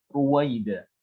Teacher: Ro-nya di sini dhammah, maka harus dibaca tebal.